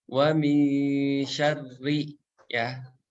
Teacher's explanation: Huruf shin di situ enggak dibaca panjang 2 harokat, tapi dibaca pendek aja.